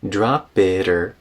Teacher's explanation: Now before or, we turn into a tap with that T.